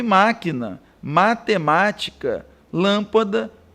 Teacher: Palavras proparoxítonas, por sua vez, possuem acento tônico na antepenúltima sílaba